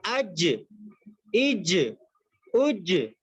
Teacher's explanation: ہماری زبان لگتی ہے اوپر، بیچ زبان، جو زبان کا بیچ کا جو حصہ ہوتا ہے وہ اوپر لگتا ہے، تو وہاں سے جیم ادا ہوتا ہے